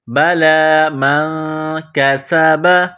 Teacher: میم نون زبر من، نون ساکن کے بعد کاف ہے، حروف اخفا ہے تو نون ساکن پر غنہ کریں گے · کاف کو باریک کرنا ہے، سین میں سیٹی کی آواز پیدا کرنی ہے